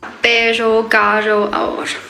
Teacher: los cerranos tendemos a arrastrar bastante la er